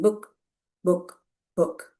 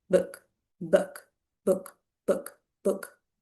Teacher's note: This is a short sound. Your lips are a little round, but not too much. Book, book, book, book, book.